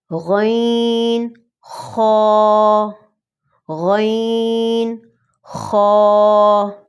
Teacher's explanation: مخرج نمبر 3 اس میں بھی 2 لیٹرز ہیں اور یہ گلے کے قریب ترین حصے سے ادا کیے جائیں گے، یعنی ادنیٰ حلق سے۔ یہ دونوں بولڈ لیٹرز ہیں، یعنی ان کو موٹا پڑھا جائے گا۔